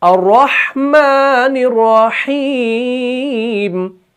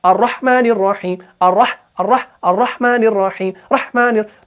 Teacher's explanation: ہا کو بھی ہم تھوڑا سا نرمی سے ادا کرتے ہیں اور آواز کو تھوڑا سا آگے لے کر جاتے ہیں, یعنی فوراً بند نہیں کرتے ہیں